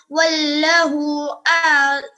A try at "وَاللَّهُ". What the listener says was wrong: واللہ مت کہا کریں, اللہ کو پورا بولا کریں نا, واللہ ہے نا.